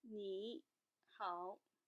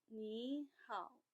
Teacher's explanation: If you have 2 characters that are both using the third tone in pinyin, the first character will be switched to the second tone